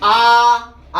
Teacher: जो बेटा मुख के आधार पर जो विव्रत होते हैं, विव्रत का मतलब ये होता है कि हमारा मुंह पूर्ण खुलना, मतलब मुख का पूर्ण खुलना या पूर्ण खुला हुआ। अगर मुंह पूर्ण खुला हुआ, जैसे आ बोलेंगे तो इसमें पूर्ण खुला हुआ है तो विव्रत हुआ होगा आ।